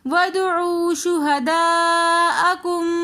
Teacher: शुहदाअकुम के काफ को हम आगे मुशद्दद मीम के साथ मिलाकर पढ़ेंगे, साकिन मीम को हम नहीं पढ़ रहे